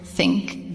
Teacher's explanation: Do not say it with a hard T. Put your tongue strictly between your teeth. Plill the air out gently and smoothly.